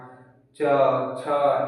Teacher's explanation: चवर्ग तालु से, यानी कि जो हमारा तालु है वो जीभ जो है ऊपर सट के फिर नीचे आएगा तब ये उच्चारण होगा।